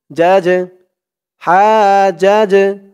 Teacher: জিমটা কলকলার হরফ ধাক্কা দিয়ে পড়তে হবে